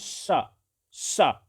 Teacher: जब वायु बाहर निकलती है तो एक सीटी की तरह आवाज निकलती है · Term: ऊष्म व्यंजन